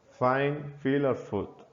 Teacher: it's called the voiceless labiodental fricative. This means that you create friction between the bottom lip and top teeth. This sound is made through the mouth and it's unvoiced, which means that you don't use your vocal cords to make the sound.